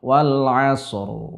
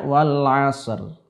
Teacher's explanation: Ro-nya terdengar tipis, padahal seharusnya dalam keadaan-keadaan ini huruf ro dibaca dengan tebal.